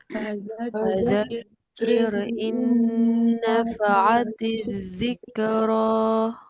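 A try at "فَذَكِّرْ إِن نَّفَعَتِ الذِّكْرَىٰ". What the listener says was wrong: Kafnya kalau sukun jangan sampai kayak ada qalqalahnya. Zikra. Jangan ya, zikra. Dia kaf sukun, dia nggak ada qalqalah, hanya saja dia ada bunyi hams.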